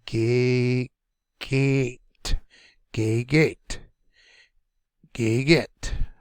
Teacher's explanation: the first one is said medium medium accent and the last one is said harder and a little bit longer